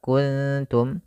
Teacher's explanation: ada nun mati bertemu kaf samarkan ke kaf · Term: ikhfa